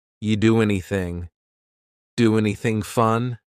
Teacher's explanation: And then the next word, anything, we sometimes drop the A, and we're going to push those two together because there's two N sounds side by side.